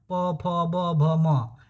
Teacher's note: अगर ओठ नहीं सटेगा तो आप प बोल ही नहीं पाओगे। बोलो तो बिना ओ सटाए हुए प बोलो। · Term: प वर्ग